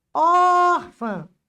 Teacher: Em orfã, a sílaba tônica é o or. Ófã, não é a última.